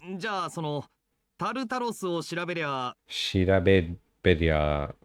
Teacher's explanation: There's always like a T or a D in there, even though it's an R sound.